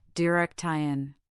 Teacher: The word direction has stress on the second syllable, direction.